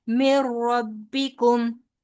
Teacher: नून थोड़ा सा वो छुप जाता है, रॉ गालिब आ जाता है और बगैर गुन्ने के अदायगी होती है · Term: इदगाम बिला गुन्ना